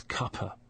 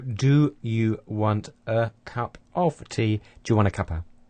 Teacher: And we've elided quite a lot there because, in fact, we've elided a complete word because the word tea has completely disappeared. The f sound in of has also disappeared. It's been weakened to so it's instead of cup of tea, it's cuppa.